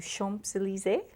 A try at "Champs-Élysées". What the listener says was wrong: Yes, I love it when English-speaking people say Champs-Élysées. It's very cute, but it's you don't pronounce the P. So Champs-Élysées.